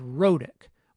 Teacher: the medial consonant sound is a tap. And you'll recall that we described the exact situation in which we would expect a tap to appear, when it's an alveolar stop that occurs between two vowels, the second of which is unstressed.